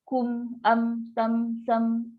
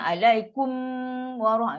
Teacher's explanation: bila tutup ada bunyi dengung. Dan dengung dia yang minimum sekali lah, bukan dengung yang tinggi macam bersabdu tu. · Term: izhar syafawi